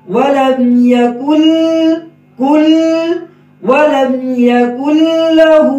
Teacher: ولم یکن لہ، ولم یکن، کاف کے اوپر پیش ہے، کاف میں ہونٹ گول ہوں گے، جو ہی کاف لام کے ساتھ ملے گا ہونٹ دوبارہ واپس آ جائیں گے. ولم یکن کل، ولم یکن لہ، ہم کیا غلطی کرتے ہیں، ولم یکن لہ کل، لام میں بھی ہونٹ جاری گول ہی رہتے ہیں تو لام میں ہونٹ واپس آ جائیں گے.